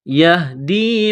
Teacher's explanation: یہ ہا ہے چشمے والی گول ہا، صرف منہ سے ہوا نکالنے کی طرح اس کے پڑھیں گے ۔ یا ہا زبر یہ، دال یا زیر دی، یہ دی،